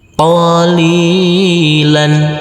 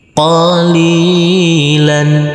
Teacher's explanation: Huruf lam ini kita baca panjang dengan panjang 2 harokat karena huruf lam berkasroh bertemu huruf ya bersukun. Selanjutnya huruf lam yang berfathah tanwin ini kita kasih akhiran huruf n.